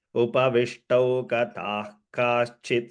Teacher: the visarga followed by ka. Wherever you see, you should notice the ha sound in a subtle way